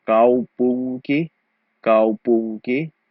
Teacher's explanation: So kaupunki, the N sound isn't really an N because in the combination of NK, the N is an ng sound